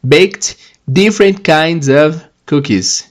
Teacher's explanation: o ED tem som de T, porque o bake é não vozeado